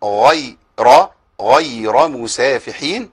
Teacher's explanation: لان ياء لينه وبعد كده راء مفخمه